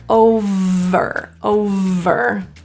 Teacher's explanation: the main issue here is the voiced V and so we're going to add our voice here